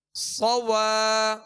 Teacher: صاد پر زبر ہے بغیر کھینچے ادا کریں گے مگر ہونٹوں کو گول نہیں کریں گے ، صاد کو پر پڑھیں گے سیٹی کی آواز اس میں